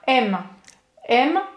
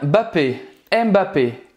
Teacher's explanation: só soltar o lábio para terminar essa pronúncia desse M